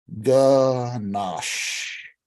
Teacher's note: It is mandatory to stretch out the SH sound at the end of the word.